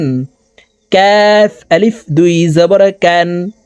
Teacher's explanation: কাফ হরফকে জিহ্বার গোড়া থেকে একটু আগে বাড়াইয়া তার বরাবর উপরের তালুর সঙ্গে লাগাইয়া উচ্চারণ করে পড়িতে হয়